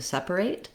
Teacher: we have first syllable stress which means my sep syllable has the most length and it has the clear vowel so the vowel letter e makes the e sound in sep